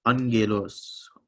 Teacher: So this first gamma, because there's a gamma after it, you put it in the back of your throat. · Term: double gamma